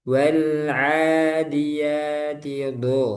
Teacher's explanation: Wal'adiyati do. Nah, do di sini tebal, isti'la. Do, bukan dabaha, tapi do.